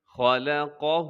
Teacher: خا موٹا ہے اور لام باریک ہے، قاف موٹا ہے، ہا باریک ہے